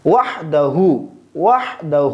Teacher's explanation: پہلی والی جو ہا ہے اس کو نرم پڑھیں گے، اور جو دوسری والی ہا ہے آخر میں اس کو حلق کے پہلے حصے سے ادا کریں گے